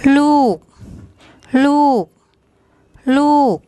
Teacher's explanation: So it's the lorling L initial consonant, then the long oo vowel that we introduced today, and then the gorgai, which has a unreleased K sound as a final consonant